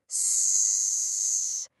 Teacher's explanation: So, it's not S, it's this long hissing sound, like a snake.